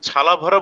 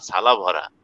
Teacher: ফরিদপুরের উচ্চারণ হলো ছালা ভরা, মানে ছটাকে ছ এরকম করে বলা, ঘৃষ্ট ধ্বনি করা